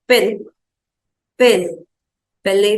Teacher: It will have the sound of E, but more open, without glide E to I.